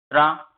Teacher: त्रा में देखिए जो आपकी जीभ है वो मूर्धा में टच करती है, जो जीभ का ये वाला पार्ट होगा ना, तो यहाँ टच करेगा, ये वाला पार्ट, ठीक है। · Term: मूर्धा स्वर